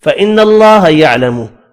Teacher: نون مشدد پر غنہ کرنا ہے · اللہ کا نام زبر کی وجہ سے پر پڑھیں گے اور ہا ساکن پڑھا جائے گا وف کی صورت میں.